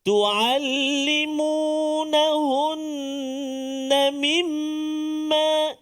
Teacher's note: Maka kita kena dengung 2 harakat, kena tak boleh cepat bacaan kita.